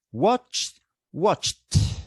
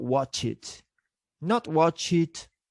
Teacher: sounds ch is voiceless. So when we add the suffix ed, we should pronounce this as T.